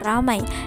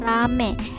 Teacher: Perubahan ini terjadi pada bunyi vokal rangkap I ke vokal tunggal E. Penulisannya pun disesuaikan menjadi rame dan pete. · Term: Monoftongisasi